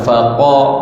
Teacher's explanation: Faqa, suara kita keluar dia naik ke atas, itu dipanggil huruf yang tebal, huruf yang bersifat dengan tebal.